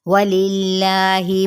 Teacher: वाव होंठों के ना तमाम गुलाई के साथ